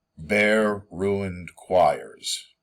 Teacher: it's not an unstressed, stressed. Bare takes a stress as well. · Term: substitution